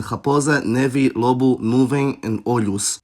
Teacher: the stress is on the penultimate syllable, like in raposa, neve, lobo, nuvem, and olhos.